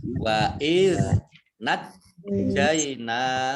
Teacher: jimnya ada tasdidnya dibaca double